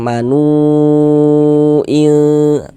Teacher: Di sini ada waw sukun, sebelum waw sukun di sini ada harokat dhammah, maka ini huruf yang memiliki harokat dhammahnya kita baca panjang nih, sehingga nu kita baca panjang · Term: mad jaiz munfasil